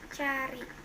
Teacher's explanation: Vokal A, kriterianya vokal belakang rendah netral terbuka